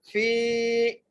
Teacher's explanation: فا کو یا سے ملا کر ایک الف کی مقدار کھینچ کے پڑھنا ہے. فی تولی تا کو واد سے ملانا ہے اور واد کو اس کے مخرج سے صحیح طرح ادا کرنا ہے.